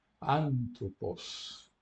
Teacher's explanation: É o espírito brando, o acento agudo, o acento fica na antepenúltima, uma palavra proparoxítona, porque a última é breve. Só é proparoxítona porque a última permite.